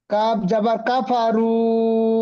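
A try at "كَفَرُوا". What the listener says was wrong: কাব জবর কাফারু কি করে হবে? কাব জবর কা।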